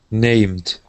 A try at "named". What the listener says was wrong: Okay, give me a D sound. You gave me a T. We want named. So with that M, you want to pull your tongue back just a little bit. Named.